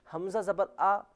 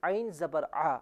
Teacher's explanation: حمزہ کا جو مخرج ہے وہ حلق کا نچلا حصہ ہے، عین کا مخرج حلق کا درمیانی حصہ۔ یہ ہوا مخرج کا ڈیفرنس جو کہ بڑا ڈیفرنس ہے، اور اس کے علاوہ صفاتی ڈیفرنس یہ ہے کہ عین کو ہمیشہ گاڑے طریقے سے ادا کیا جائے گا۔